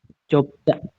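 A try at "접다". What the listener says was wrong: jopta ya. Dibacanya jopta bukan jopda.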